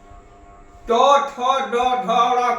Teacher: ट ठ ड ढ ड़ का उच्चारण मुर्धा से